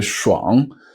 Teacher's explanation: add an sh with the tongue a little bit up like you're saying garage which is like refreshing so schang you would say this one